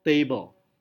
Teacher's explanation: Ini berarti silabel pertama mendapatkan primary stress, silabel kedua mendapatkan secondary stress. Berarti silabel pertama stresnya lebih tinggi daripada silabel kedua